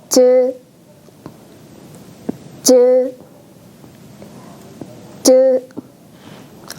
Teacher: 혀의 중간 부분을 입천장에 댔다가 조금 떼고 이 틈 사이로 바람을 내보냅니다. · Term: 자음 즈